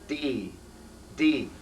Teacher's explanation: when you do the letter D normally you touch just the tip of your tongue behind your front teeth